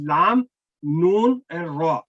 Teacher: और फिर जुबान की नोक थोड़ा आ जाए तो मसूड़ों से ऊपर जो तालु का हिस्सा नरम वहां पे लगाए जाके, तो ये 3 हरूफ जुबान की नोक का ऊपर वाला हिस्सा जो है उसके साथ ये 3 हरूफ अदा होते हैं